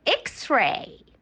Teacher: its sound has two sounds k and s